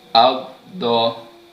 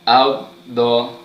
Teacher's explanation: Saya menggunakan lidah, sisi lidah belah kanan yang disentuhkan pada geraham gigi belah atas. Baik, itu untuk huruf dot yang mana makhrajnya pada sisi lidah yang dikenakan pada gigi geraham belah atas.